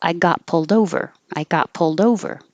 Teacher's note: The D connects to the O, and pulled over is a phrasal verb where the over is always stressed. So it goes together as like a phrase that's always together.